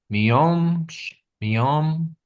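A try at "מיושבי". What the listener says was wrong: No M. Miyosh. Miyosh. Ve. Ve. The two dots is an E sound. Ve. Miyosh ve.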